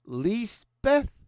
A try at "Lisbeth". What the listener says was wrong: But not with a TH. Bet.